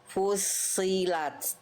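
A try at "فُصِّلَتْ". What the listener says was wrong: Angkat lagi sedikit pangkal lidahnya. Fusilat. Nah, jangan pakai monyong. Yang tebelnya karena pangkal lidah, jangan monyong. Lidah dalamnya diangkat ke atas, kayak melafalkan huruf qaf.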